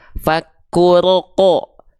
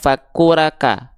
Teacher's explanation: dibacanya vokalnya bukan vokal condong ke A tapi seperti O, fakuroko, bukan fakuraka, ya, oke, jelas ya. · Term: huruf tebal